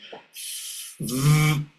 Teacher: the sound VV which is problematic for Spanish speakers of English is of course F which they have within Spanish plus voicing. So we start with a Spanish we add voicing VV and we've got the target English sound.